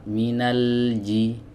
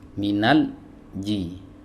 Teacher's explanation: minanji ini diputus Minal ini diputusnya nggak boleh yang benar minalji kadang ada yang meng qolqolahkan di huruf lam ini nggak boleh ya jadi dialirkan bukan dipantulkan